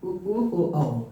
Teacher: हमारे होठ जो है बिल्कुल एकदम गोल हो जाते हैं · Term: वृत्तमुखी स्वर